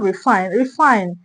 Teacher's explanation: We're going to stress fine. We're going to stress fine.